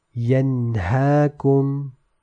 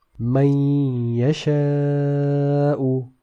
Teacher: Whereas in this example, Man Yasha'u, you will notice how the lisani component was dropped, whereas only the ghunnah was retained.